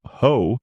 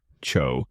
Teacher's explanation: In the UK, it's pronounced ho with the vowel slightly shorter and softer, cho, giving it a gentle, relaxed sound. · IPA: /həʊ/